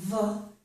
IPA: v